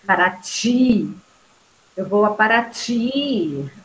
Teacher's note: Ti. É a sílaba tônica. Então, é uma palavra oxítona.